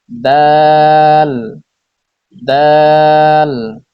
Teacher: জিহ্বার আগা সামনের উপরের দুই দাঁতের গোড়ার সঙ্গে লাগিয়ে উচ্চারিত হয় দাল